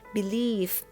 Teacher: ตัวVคือเราก็จะต้องกัดริมฝีปากนะคะเวลาออกเสียงbelieveนะคะพอจบคำก็คือกัดริมฝีปาก